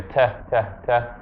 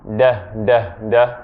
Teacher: Just like how when we say T, we're not using our vocal cords, but when we say D, we are.